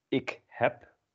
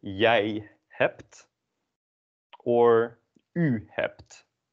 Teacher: notice that the B at the end of the word is pronounced as a P